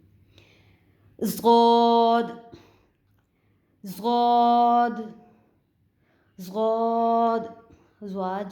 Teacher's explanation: یہ زبان کا جو بغلی کنارہ ہے، اوپر والی جو جڑیں ہیں اس سے ضاد کی ادائیگی ہوگی